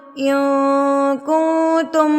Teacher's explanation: نون کی آواز کو ناک میں چھپا لیا